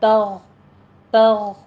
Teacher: غین کو آپ نے موٹی آواز پر آواز کے ساتھ پڑھنا ہے، ادنا حلق سے ادا کرنا ہے، اس کے اوپر قلقلہ بھی نہیں کرنا اور اس کے بیچ میں ہمس بھی نہیں لے کر آنا ہے۔